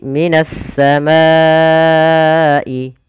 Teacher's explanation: ke huruf syin maka juga bisa dikenal dengan idgam Syamsiyah yaitu Alif lamnya diidgamkan ke huruf Sin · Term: idgham syamsiyah